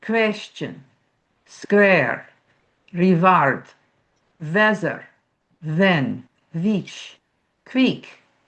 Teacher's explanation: There's no W. They substitute a V.